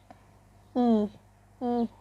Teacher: Vokal I ini tinggi dan lidah lebih menjorok ke depan.